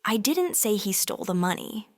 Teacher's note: But if you say, I didn't say he stole the money, with emphasis on he, it implies someone else was the thief.